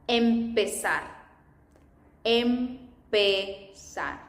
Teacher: But in Colombia, we make no distinction on S or Z.